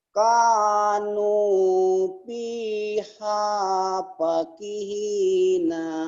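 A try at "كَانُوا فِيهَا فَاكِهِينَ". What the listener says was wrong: Pa-nya juga panjang. Pakihina. Nanya pendek.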